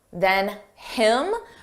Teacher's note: Notice how you don't hear the H on him, than him. But if we want to combine those sounds together and say it like one word, then him.